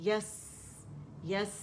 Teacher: یا جو ہے وسط اللسان سے تو پہلے یا پہ جائیں گے پھر سین پہ جائیں گے